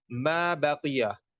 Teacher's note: काफ हरफ मुस्तालिया है, इसे पुर करके मोटा करके पढ़ेंगे